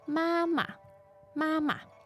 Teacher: so it's a first tone and a neutral tone